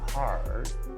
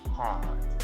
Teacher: the BBC type of English is non-rhotic, where speakers don't pronounce the R. So instead of pronouncing hard, they would say hard.